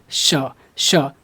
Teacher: ऊपर की तरफ मुर्धा में और वहीं से बोलना है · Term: मुर्धन्य श